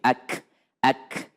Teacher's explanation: ketika menyebutkan huruf kaf kalau dia sukun maka dia ada desisnya sedikit